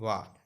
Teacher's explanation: तो आप वाह बोलते समय देखिए, जब आप वाह बोलेंगे तो आपका जो नीचे वाला ओंठ है वो ऊपर वाले दांतों पे लगेगा, ऊपर का जबड़ा है उन उसके दांत उधर पे आपका वाह बोलते समय आपका नीचे के ओंठ ऊपर के दांतों पे लगेंगे। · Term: दंतोष्ठ